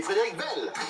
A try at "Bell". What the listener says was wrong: Non, tu as dit Belle.